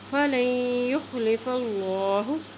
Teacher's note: اللہ کے نام سے پہلے زبر ہے تو اللہ کا نام موٹا پڑھا جائے گا